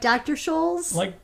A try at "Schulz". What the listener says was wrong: No, Schulz. Well, like Schultz, but like without Schultz. A T.